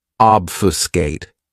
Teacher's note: This verb has three syllables and the stress is on that first syllable.